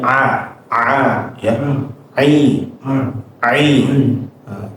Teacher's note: epiglotis benar-benar merapat ke bagian dinding belakang tenggorokan. Jadi benar-benar merapat menekan ya di bagian belakang sini. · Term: huruf ain